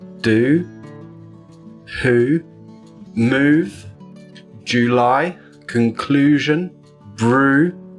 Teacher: the back of the tongue rises up in the mouth, even higher than with the /ʊ/ sound, and we blow a long pulse of air out of our mouth. So, /uː/. · This video will look at ooh. This is a long vowel sound. Technically, it's known as the close-back rounded vowel.